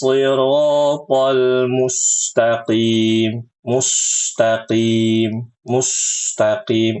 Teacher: membaca sin yang sukun dalam keadaan dimonyongkan bibirnya